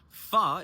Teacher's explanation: Fa is an unvoiced Va